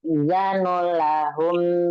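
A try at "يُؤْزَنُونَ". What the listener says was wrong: Yang di depan yuk zanu itu pakai hamzah, bukan ain.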